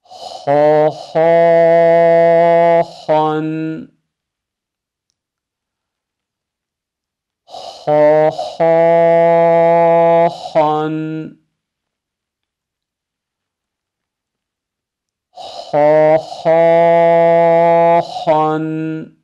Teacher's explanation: Bu harfimizi seslendirirken doğrusu mümkün mertebe hırıldatmadan çıkarmaktır. Gayn harfinin kardeşi olduğu için gayn harfini bir hakkın çıkaran ha'yı da çıkarmış olur.